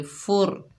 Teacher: फ़ा के ऊपर पेश है, रॉ साकिन है, फ़ा को रॉ से मिलाएंगे, रॉ को पुर पढ़ेंगे यानी मोटा पढ़ेंगे